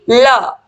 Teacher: पार्श्विक वर्ण में जो मुख द्वार है वो बीच में बंद हो जाता है और हवा दोनों ओर से निकल जाती है